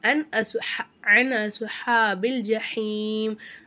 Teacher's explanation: நுனை சாக்கினை வெளிப்படுத்தி உச்சரிக்கணும்.